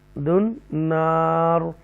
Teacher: تفخیم کے ساتھ را کو پڑھیں گے وقف کی صورت میں بھی کیونکہ اس سے پہلے زبر ہے